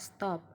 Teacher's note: apabila huruf s ini bertemu dengan huruf t maka huruf t ini seolah-olah menjadi pelatal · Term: asimilasi